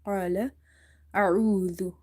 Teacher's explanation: qaf is heavy. Because of this qaf, alif is also heavy. قال أعوذ. Ain is from the middle of the throat.